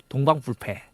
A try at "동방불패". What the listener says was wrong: 그 부입니까? 불패가?